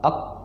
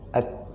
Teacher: yang pertama itu adalah qaf, pangkal bagian belakang, ak, dan yang kedua adalah kaf, yaitu pangkal bagian depan.